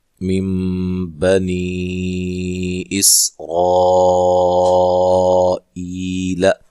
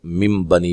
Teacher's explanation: یہ نون کو میم سے بدل کر غنے کے ساتھ پڑھنے کو اقلاب مع الغنہ کہتے ہیں